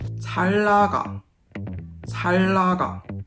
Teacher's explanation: When the very round lir meets the very flat nian, the nian turns into a lir. So it's influenced by this very round sound.